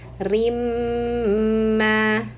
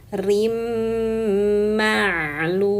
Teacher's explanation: Biqodarin ketemu huruf mim. Idghamkan rin masukkan ke mim rimma. Nah, ini namanya idgham bighunah.